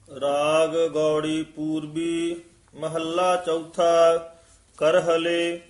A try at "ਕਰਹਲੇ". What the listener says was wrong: ਹਾਂਜੀ ਕਰਹਲੇ ਹੀ ਬੋਲਣਾ ਹੈ, ਕਰਹੱਲੇ ਨਹੀਂ ਕਹਿਣਾ ਹੈ, ਕਰਹਲੇ।